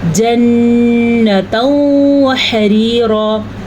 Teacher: نون کے اوپر غنہ ضرور کریں گے کیونکہ نون پہ شد ہے